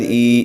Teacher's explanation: قریش، لإیلاف قریش، ایلافیہم، حمزہ کھڑا زیر ای، اس کو کھینچ کے پڑھیں گے الف کے برابر